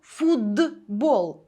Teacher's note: глухий поруч із дзвінким б перетворюється на дзвінки д поруч із дзвінким б глухий знайшов собі дзвінку парочку А